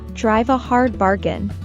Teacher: link drive and a together for a smooth flow in fast speech.